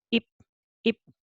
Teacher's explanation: ㅂ sound as a final consonant sound becomes 읍 sound